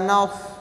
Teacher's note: ada sofir bersiul sedikit seperti siulan burung, nas, dan mengalir udara dan mengalir nafas sebagaimana sifatnya hames.